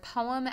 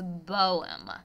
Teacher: student who is mispronouncing the word poem as bowen and he was voicing the P sound and causing it to come out as a B sound